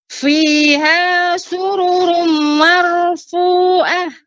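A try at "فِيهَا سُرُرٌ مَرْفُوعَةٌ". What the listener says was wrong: sururumnya Ibu, sururumnya kurang panjang gunnahnya. Fiha sururum marfu'ah.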